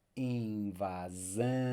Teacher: By the way, let me just backtrack here just to underscore that in these ones, when we have the S, the single S, and when S is in between vowels, such as invasão, S in between vowels, as you may know, will render the Z sound